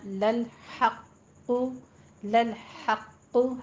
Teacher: ہا باریک رکھیں گے وسط حلق سے